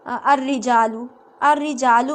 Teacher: الرجالو میں را کے جو اوپر جو شد ہے اس کے نیچے کیا ہے؟ زیر ہے، تو اس کو آپ باریک پڑھیں گے